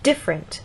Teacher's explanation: they'll say different, stress on the first syllable